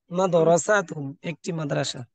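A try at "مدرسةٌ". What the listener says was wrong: না, টান হবে না। হ্যাঁ, মাঝে টান নেই, মানে বাদ হবে না। টান দিচ্ছেন কেন?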